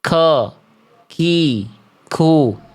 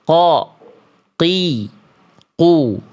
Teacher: huruf qaf tidak boleh diucapkan dengan hembusan napas